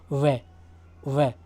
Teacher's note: वे का दंतोष्ठ ऊपर के दांत प्लस निचला होठ, ये दोनों से बोला जाता है